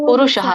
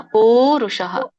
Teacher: ಪೂ ದೊಡ್ಡದಿದೆಯಲ್ಲ, ಪುರುಷಃ ಅಲ್ಲ, ಪೂರುಷಃ. ವ್ಯತ್ಯಾಸ ಇದೆ ಶಬ್ದಕ್ಕೆ.